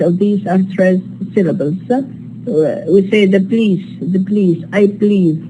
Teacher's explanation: the vowel in the first syllable is deleted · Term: Vowel deletion